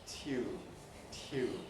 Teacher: In the case of tune, the aspiration happens during the yod, tune, tune, which of course is why it's easy for it then to become tune in some people's speech.